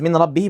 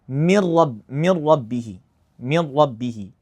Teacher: we're going to pronounce the two consecutive letters, which is the noon and ra as one single mushaddad letter the same as the second. So, I'd say instead of So, like in Arabic it's min rabbihi, but in the Quran I'd say mir rab mir rabbihi mir rabbihi. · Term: idgham